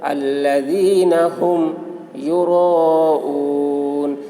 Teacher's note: حرف مد کے بعد حمزہ اسی کلمہ میں ہے، اس لیے مد متصل ہوا، مد متصل کو 3 یا 4 الف کے برابر کھینچ کر پڑھیں گے۔ یوراؤ، واو ساکن سے پہلے پیش ہے، واو مدہ ہوا، اس لیے واو مدہ کو ایک الف کے برابر کھینچ کر پڑھیں گے۔